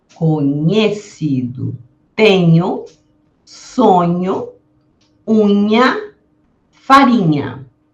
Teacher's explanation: o dígrafo, que é esse som que se produz através da união do nh, que é parecido ao N do espanhol, e pede uma pronúncia nasal